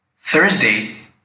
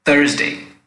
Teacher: the tip of the tongue touches the wall of the teeth while the hump of the tongue touches the upper gum area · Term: light Indian th